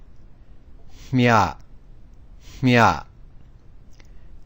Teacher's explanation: This particular combination is a combination of aspiration with the middle Y sound. So its pronunciation is, we aspirate the consonant and follow that by a Y sound